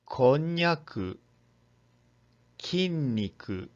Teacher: N is pronounced as a voiced palatal nasal to make it easy to pronounce.